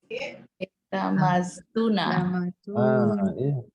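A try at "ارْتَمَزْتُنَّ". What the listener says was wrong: Pakai tasdid.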